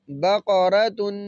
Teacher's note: قاف کی آواز کو موٹا کریں گے، را کو بھی موٹا اور تا کو باریک پڑھیں گے